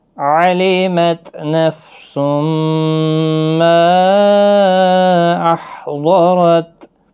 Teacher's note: تنوین کے بعد یارملون کا میم ہے، ادغام مع الغنہ ہوگا، گنہ کے ساتھ پڑھیں گے.